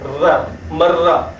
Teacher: There is an emphasis on ra, and we'll later find out that it is basically two ra's combined into one. But for now, we can just say that we put an emphasis on it. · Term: shadda